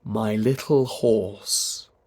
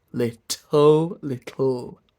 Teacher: actually the best pronunciation for little would be the lateral releasing T. So if you can do that, stick to that.